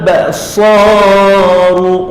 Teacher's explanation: huruf sad, hujung lidah sentuh antara gusi dan gigi bawah. Lidah tu bisa Biasa kat bawah antara gusi dan gigi bawah.